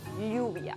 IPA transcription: 'ʎu.β̞ja